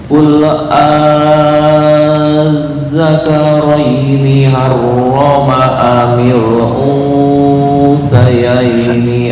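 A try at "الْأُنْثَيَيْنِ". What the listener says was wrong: Fa bukan sa. Fa. Masih condong ke sin. Fa. Fa. Ujung lidah dicepit dengan ujung gigi atas. Fa.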